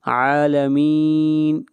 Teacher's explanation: رب العالمین، عین کو کھینچ کر پڑھیں گے ایک الف کے برابر، عین کے اوپر کھڑی زبر ہے۔ عالمین، یہاں پر مد عارض وقفی ہے، اس مد کو 3 الف کے برابر کھینچ کر پڑھتے ہیں